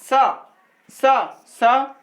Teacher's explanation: ऊष्म व्यंजन, इसके उच्चारण में हवा मुख से रगड़ खाने से ऊष्मा निकलती। जब हम ये सब शब्दों का जब उपयोग करते हैं तो आजू बाजू से आप देखोगे तो रगड़ खा के हवा निकले।